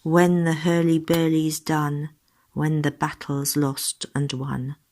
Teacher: there is a regular rhythm a stressed and then an unstressed syllable and there are rhymes